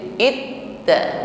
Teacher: Jadi sama dengan huruf dal yang tadi, huruf ta juga memiliki sifat syiddah. Ketika ditasydid, itta, makhrajnya tertutup dengan sempurna sehingga bunyi ta di sini tertahan.